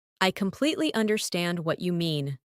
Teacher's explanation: Emphasize completely and understand. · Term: stressing key words